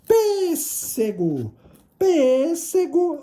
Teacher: a sílaba tônica é a antepenúltima